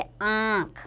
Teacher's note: दूसरा है अनुनासिक यानी चंद्र बिंदु। इसका उच्चारण नाक और गले दोनों से होता है